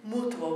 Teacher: Again, two syllable word, beat on the first u, mutuo. Uo being a combined single syllable sound.